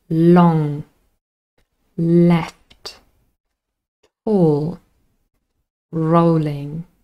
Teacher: The tip of the tongue has clear contact with the alveolar ridge. · It's a voiced lateral approximant. Sometimes people just call it a lateral.